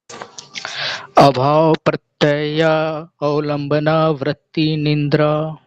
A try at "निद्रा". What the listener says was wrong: निंद्रा नहीं है सर, ये कल भी महाभारत थी, आज फिर अभी निद्रा है, ये निद्रा।